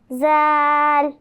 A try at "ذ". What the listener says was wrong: ذا، ذا، ذا، نرمی سے، ٹھیک ہے؟ اور لمبا کریں گے، ذال۔ لیکن یہ نہیں کریں گے، سیٹی کی آواز نہیں آئے گی، بہت نرمی سے ادا کرنا ہے، ٹھیک ہے؟ ذال، ذال۔